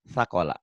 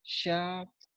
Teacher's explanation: Sa-nya kayak ujung lidah ke ujung gigi ya. Cadel. Sakola.